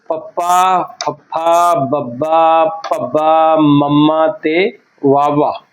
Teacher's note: ਸਾਡੇ ਬੁੱਲ ਜੁੜਦੇ ਆ ਜਦੋਂ ਅਸੀਂ ਉਚਾਰਨ ਕਰਦੇ ਆਂ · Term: ਹੁਣਠੀ ਧੁਨੀਆ